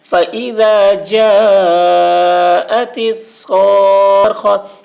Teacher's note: مد لازم کو 3 یا 4 الف کے برابر کھینچ کر پڑھیں گے. فإذا جاءت الصاخة، خا کے اوپر زبر ہے، زبر کو جلدی پڑھیں، تھوڑا بھی نہ کھینچیں.